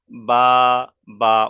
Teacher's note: বার মাখরাজ হল যে দুই ঠোটের ভিজ অংশ থেকে উচ্চারিত হয়